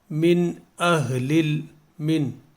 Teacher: یہ جو نون ساکن ہے اس کو ہم غنہ نہیں کریں گے یہاں پہ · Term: اظہار